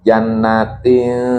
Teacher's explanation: Akrob ya, Jadi dekat. Jadi ketika mengucapkan nun, lidah itu sudah dekat ke huruf ta.